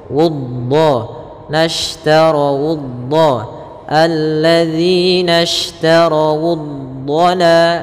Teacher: dhad ada salah satu sifatnya adalah sifat istiqalah, yaitu sifat memanjang sedikit